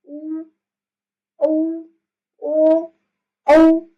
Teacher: इसमें क्या होता है, जैसे हम बोलते हैं, आप खुद बोलकर देखो मेरे साथ साथ, ओ, ओ, औ, ऐसे आप बोलोगे तो आपके जो होठ है ना वो इस शेप में आ रहे हैं, गोल बन रहे हैं। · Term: वृत्तमुखी